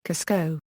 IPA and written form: ˈkuːzkoʊ (Cusco)